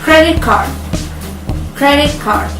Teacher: Next, T becomes K before sound K and G. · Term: assimilation